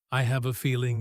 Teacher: The phrase, I have a feeling. often carries a gentle, thoughtful rise and fall